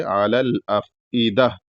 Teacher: دہ پہ رکنا ہے اور ہا کی آواز نکلنی چاہیے